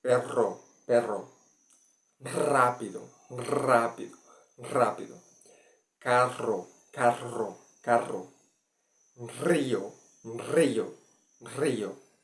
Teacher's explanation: In the second sounds, rolling R, it's the air comes out, and there's a vibration with your tongue